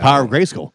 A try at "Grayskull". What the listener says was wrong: Gray skull. You're saying skull, like the dip.